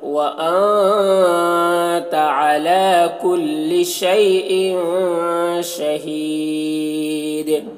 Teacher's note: دال میں وقف کریں گے تو تنوین سکون سے بدل جائے گا تو پھر دال میں قلقلہ بھی ہوگا · شہی یہاں پر وقف کریں گے تو مد عارض وقفی ہوگا، اس میں طول توسط قصر تینوں جائز ہوتا ہے۔